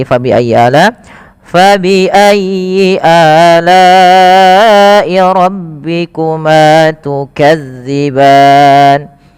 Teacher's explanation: Pada lafal fabi ayyi lembutkan pada lafal ya-nya tapi ditekan dengan tasydidnya. Ala'i, a mad badal adanya hamzah bertemu dengan alif.